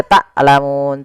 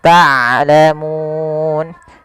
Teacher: Taklamun ini sering terjadi mengganti huruf ain dengan huruf hamzah. Harusnya dia ain dari tengah tenggorokan kita. Dan ain mempunyai sifat bainiah di antara syiddah dan rakhawah. · ain mempunyai sifat bainiah di antara syiddah dan rakhawah. Tidak dialirkan suaranya dan tidak terlalu ditahan suaranya. Tapi di tengah-tengah di antara keduanya.